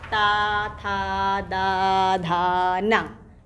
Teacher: ये इन वर्णों के उच्चारण में हमारी जिह्वा दांतों को स्पर्श करती है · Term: दंत वर्ण